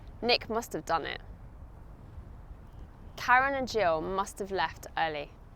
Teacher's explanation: when I pronounce these contractions with modal verbs, it actually gives the sound that I'm saying 'should of' or 'must of'.